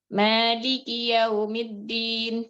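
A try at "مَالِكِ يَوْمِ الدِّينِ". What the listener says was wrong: Masya Allah. Udah tahu di mana koreksinya ya?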